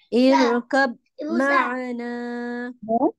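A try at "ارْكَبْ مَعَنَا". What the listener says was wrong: Nah, langsung diidghamkan ke huruf mim. Jadi huruf ba-nya tadi ini sudah tidak dibaca ya. Dianggap tidak ada. Langsung ke huruf mimnya.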